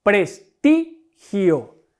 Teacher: Recargo la voz en la sílaba ti. Puesto que es una llana, porque está la sílaba tónica es la penúltima sílaba, recuerden que esta gio es la última, ti la penúltima y pres la antepenúltima.